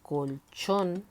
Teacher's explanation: tanto la sílaba tónica está en la última la palabra colchón si te das cuenta la sílaba tónica es la última